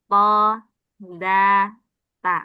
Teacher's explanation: Ujung lidah kena pangkal gigi seri atas. Th da ta. Enggak keluar lidahnya tapi di pangkal gigi seri atas.